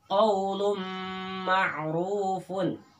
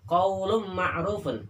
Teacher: ketika mengucapkan mimnya atau tanwin masuk ke dalam mim, itu ditahan 2 harokat atau 1 alif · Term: idgham gunnah